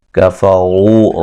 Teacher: تج، جیم پہ قلقلہ کریں گے، نا الف مدہ ہے، فتنۃ للذی یا مدہ ہے، کفروا را کو موٹا ادا کریں گے، واو مدہ ہے